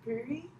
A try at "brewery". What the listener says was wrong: There was a W. You added a W in there somehow.